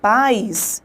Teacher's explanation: Eu tenho uma vogal, eu tenho uma semivogal e este encontro forma então o ditongo. Como sai de um som forte e cai para um som fraco, o ditongo então será decrescente.